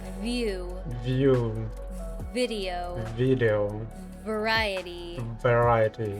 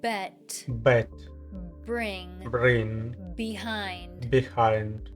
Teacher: Make sure you don't stop the air completely by pressing your teeth too hard against your lower lip because this might make it sound like B instead.